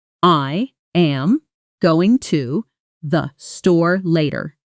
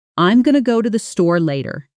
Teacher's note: Did you catch store and later as the strongest clearest words? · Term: strong stressed words